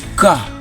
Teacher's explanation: Most Australians don't pronounce the r at the end of words like uh car.